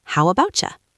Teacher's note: Notice that when you say, how about you, the T in about and the Y in you often connect to make a ch sound. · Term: connect the sounds